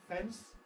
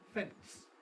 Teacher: you can, if you like, insert a plosive, a T, between the N and the S. That is, rather than fence, you can say fence.